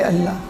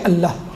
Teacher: جب الہ کہیں گے تو لام لام میں مدغم ہو جائے گا, اور الف حذف ہو جائے گا بیچ سے الہ کا, تو یہ بن جائے گی اللہ.